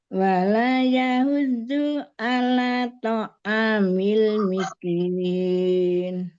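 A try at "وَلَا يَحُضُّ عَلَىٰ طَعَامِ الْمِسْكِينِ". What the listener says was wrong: Wala, la-nya 2 harokat, jangan kurang.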